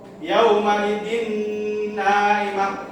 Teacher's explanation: Nah, contoh yang kedua yaitu yauma idzin na'imah. Nah, di sini ada kasrotain bertemu salah satu huruf idgham biguna yaitu nun. Maka wajib dibaca dengung ya.